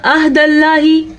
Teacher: एक तो उसने आइन को अलिफ बना दिया, दूसरा अल्लाह के नाम को बारीक पढ़ा। आइन को आइन ही पढ़ सकते हैं और आइन का मखरज क्या होता है, आ, आइन ज़बर आह, तो हम इसको पढ़ेंगे आह।